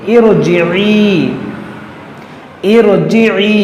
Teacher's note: را ساکن سے پہلے عارضی زیر ہو تو را کو موٹا پڑھا جاتا ہے